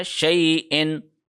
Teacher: شیء کے اوپر یا لین کا قانون لاگو ہو رہا ہے کیونکہ شین کے اوپر زبر ہے اور یا کے اوپر جزم ہے، شیء لمبا نہیں کریں گے